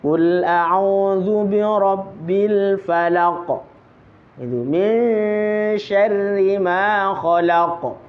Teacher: Kalau qof punya sifat qalqalah yaitu memantul.